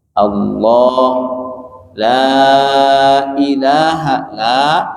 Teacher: Aljauf itu berarti rongga dalam itu alif madiyah. Alif yang dibaca panjang.